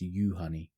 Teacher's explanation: the emphasis is on the first syllable and the j is pronounced like an english y